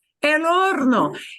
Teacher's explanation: And la H no se pronuncia. We don't pronounce that H in the word horno.